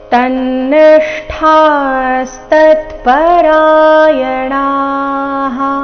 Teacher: ಷ್ಠಾಸ್ ಮೂರ್ಧನ್ಯ ಶ ಅರ್ಧ ಜೊತೆಗೆ ಠ ಮಹಾಪ್ರಾಣ ದೀರ್ಘ ಇದೆ. ಠ ಆದ ನಂತರ ಅರ್ಧ ಸಕಾರ ಇದೆ.